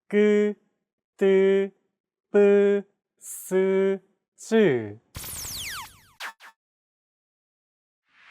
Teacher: Tense consonants, also known as double consonants, are pronounced with a stiffer voice. More pressure is built up and it's released much more quickly than plain sounds.